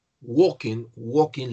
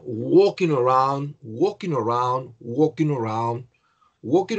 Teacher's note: la l no se pronuncia